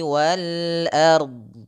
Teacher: Huruf a tipis, huruf r tebal, huruf d mengikuti bentuk sukun.